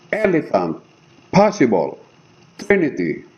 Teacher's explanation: the first syllable is stress and the second syllable is unstressed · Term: dactyl